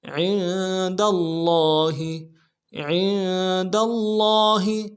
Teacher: عین کو نون کے ساتھ ملانا ہے، نون ساکن کے ساتھ، نون ساکن میں غنہ ہوگا